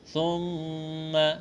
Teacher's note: میم مشدد ہے، یہاں پر غنہ کریں گے، آواز ناک میں چھپائیں گے